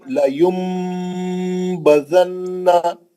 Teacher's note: نون کو میم سے بدل کے غنہ کرنا ہے